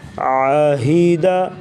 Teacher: عین جو ہے حلق کے درمیان سے، ہا حلق کے سب سے نیچے والے حصے سے ادا کریں گے جو سینے کے قریب ہے ۔ عاہیدہ، وقف عاہد، یا زبر یا، حمزہ زیر ای، یا